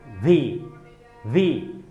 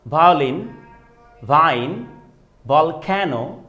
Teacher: আপার teeth, lower lip একসাথে করে, যেমন আপার টিথ দিয়ে লোয়ার লিপটাকে ধরে ফেলবো, মানে উপরের দাঁত দিয়ে নিচের ঠোঁটটাকে কিন্তু ধরবো এভাবে।